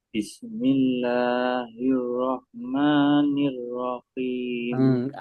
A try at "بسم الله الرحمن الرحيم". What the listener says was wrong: Mengalirnya kurang berani. Di rah. Jadi makhrajnya memang dia sifatnya dia tuh hamis. dibaca kho, rah, lain nggak enak. Karena ini rah agak ringan karena dibawakan paling bawah berat. Ini ya, kalau rah lain lagi. Kalau kho lain lagi.